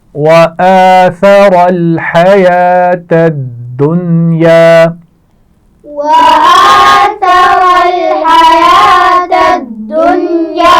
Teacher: حیات، اس میں آپ دیکھ رہے ہیں واو لکھا ہوا ہے لیکن یہ پڑھا نہیں جائے گا، یا کے اوپر کھڑی زبر ہے، اسی کو ہم پڑھیں گے حیات الدنیا۔ دال کو سختی سے پڑھیں گے کیونکہ اس پر شد ہے، اور نون ساکن کے بعد یا ہے، دنیا اس کو نہیں پڑھا جائے گا کیونکہ نون ساکن ہے، اس کے نیچے زیر نہیں ہے۔